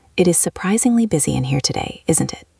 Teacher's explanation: Notice how your voice goes down at the end on isn't it? This shows you are making a comment, not asking a serious question.